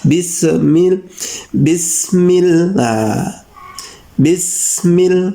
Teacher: Jadi mulai sekarang jangan sampai ada huruf E di sini. Ini harus murni sin dan kemudian mim. Sinnya mati.